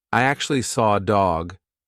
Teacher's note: I can't see an R, but I said an R, and that is because we have a feature called an intrusive R.